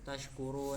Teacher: dibacanya itu tashkurun sepanjang 2, 4 atau 6 harokat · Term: mad arid li sukun